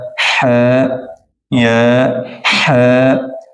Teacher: ح نکالتے جائیں، درمیان حلق سے نکلتا ہے